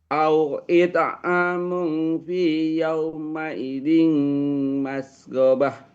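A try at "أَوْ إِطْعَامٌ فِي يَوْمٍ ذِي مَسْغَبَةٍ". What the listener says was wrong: Bukan yaumaidin, tapi yaumin di.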